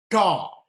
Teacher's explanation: So the tongue is a little bit curled and touches the hard palate.